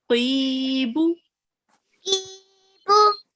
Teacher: because there is a ya madya here, we would prolong the qaf for 2 seconds